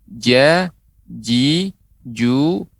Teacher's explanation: pengucapan Ja jangan sampai nampak terdengar ada berhenti dalam arti tertahan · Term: huruf Jim